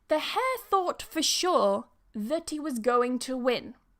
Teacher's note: we're going to remove the H in he because it's not strong, right? It's a weak word.